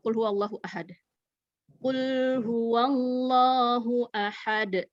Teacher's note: Nah itu kan lamnya tidak ada tekanan dan tidak ada aliran